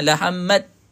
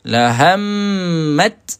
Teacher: kalau kita berhenti ha kena keluarkan angin eh